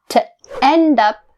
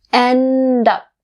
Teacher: The D is connected to up.